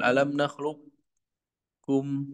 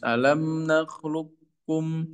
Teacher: Adapun kita yang sudah kita baca adalah qof-nya hilang ya langsung ke kaf tipis. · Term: idgam murni